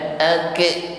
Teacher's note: kalau ak berarti lidahnya posisinya turun atau istifal, padahal sifat yang menyertainya adalah isti'la.